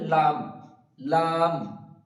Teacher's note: যখন লাম শেষ হচ্ছে তখন দুটো ঠুট একসাথে মিলিত হয়ে যাবে · জিভের আগাটা উপরের তালুর সঙ্গে লাগিয়ে উচ্চারিত হবে এবং দুই ঠোঁট একসাথে মিলিত হবে, হয়ে উচ্চারিত হবে লাম, লাম।